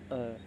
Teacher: बोल के देखो अ में दोस्तों हमारी जीभ है ना वो मध्य में ही है, ना तो आगे जा रही ना पीछे जा रही है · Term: मध्य स्वर